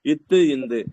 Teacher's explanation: இட்டு இன்னு அதுக்கப்புறம் பல்லு பல்லு இருக்கு ஓகேங்களா இத்து இந்துன்னு சொன்னாலே நம்ம நாக்கு போய் எதை தொடும் பல்லோட அடிப்பகுதிய தொடும்